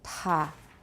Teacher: For ta, we have this quite a long period of frication from the aspiration. So ta. This is the h sound.